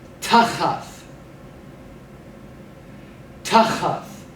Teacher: Penultimate stress here, so pronounce that first syllable more loudly than the second.